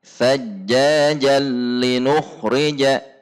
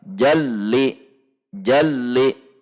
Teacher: tanwin dilebur secara zat dan sifatnya kepada huruf lam. Jalli, jalli, betul-betul masuk ke huruf lam, dan bunyi nun sukun atau tanwinnya menjadi hilang dan terjadi idgham bila gunnah, tanpa dengung, karena huruf lam tidak memiliki sifat dengung. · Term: idgham kamil